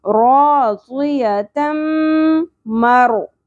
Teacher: तम मिलाएंगे भी और गुन्ना भी करेंगे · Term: इदगाम माल गुन्ना